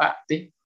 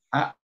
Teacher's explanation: un joven pronuncia como a, glotalizando esa T